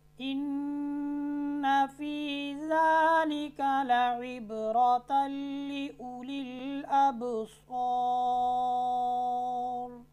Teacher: دیکھیں یہاں پر تنوین کے بعد لام آ رہا ہے، تنوین کو ہم نے لام کے ساتھ ملانا ہے لیکن اس میں غنہ نہیں ہوگا۔